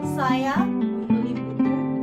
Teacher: Contoh dalam kalimat bahasa Indonesia: saya membeli buku. Tekanan pada kata saya, maksudnya yang membeli buku adalah saya, bukan kamu atau dia.